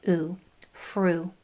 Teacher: your mouth shape is in that forward pucker, so it's not going to back up and say U. It's going to just make that last part of that sound, oo, fru.